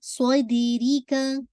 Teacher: کیونکہ یہ آپ کا یا ساکنہ سے پہلے کسرہ آ رہی، یا لین ہے یہ. صودیری کا، صود دال پہ قلقلہ، صود کو ہیوی لیکن دال ہیوی نہیں